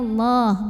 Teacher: maka bacanya ditebalkan pangkal lidah dinaikkan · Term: tafkhim